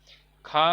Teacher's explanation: कंठ है, महाप्राण है और अघोष है, क्योंकि दूसरा है।